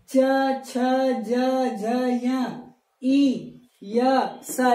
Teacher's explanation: च छ ज य इ य स इनका उच्चारण स्थान कहां से है तालू से